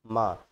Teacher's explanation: नासिक के मतलब होता है नाक से, क्योंकि स्पर्श व्यंजन में लास्ट वाले जो वर्ण होते हैं वो ऐसे होते हैं जिनका उच्चारण करते टाइम आपकी नाक से आवाज आती है